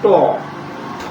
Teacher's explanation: এর উচ্চারণ করার সময় জিহ্বাটা কি হচ্ছে? উল্টে মূর্ধে লেগে উচ্চারিত হচ্ছে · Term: মূর্ধা ধ্বনি